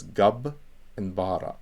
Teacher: it's doubling the beth so it's basically assimilating the beth into a second consonant so it goes gab and bhara we don't say ya bara